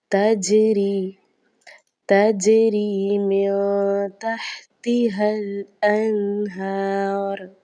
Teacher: تا کے بعد جو جیم ہے چونکہ یہ ساکن بھی ہے اور حروف قلقلہ میں سے بھی ہے تو یہاں پر قلقلہ خوب ظاہر ہوگا